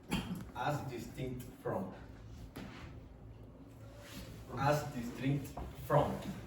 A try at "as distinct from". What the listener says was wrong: Yes, but now he put an or in the middle of this as distinct. If you don't do that in English, you will not be understood. Okay, you have to pronounce the last consonant in syllables.